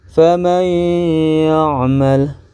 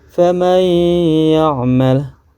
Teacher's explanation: Nun sukunnya tidak terbaca, langsung saja ke huruf sesudah nun sukun yaitu ya, dan dibacanya secara tasydid atau ditasydidkan dan serta mendengung. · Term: idgham bi gunnah